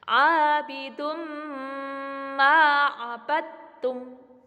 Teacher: tanwin bertemu dengan mim, maka dibaca dengung disebut dengan bacaan idgham bi ghunna